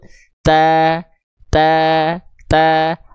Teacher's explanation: Karena rongga mulutnya terbuka, rongga pangkal lidah nggak naik, jadi vokal a-nya keluar dengan bebas dari mulut. Ta, ta, ta.